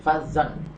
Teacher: Yang kelima falzan ghalidha, falzan ini disebut dengan izhar halqi ya, karena ada tanwin fathah bertemu dengan ghain. Ini tanwin fathahnya bertemu dengan ghain, membacanya tanwinnya dibaca dengan jelas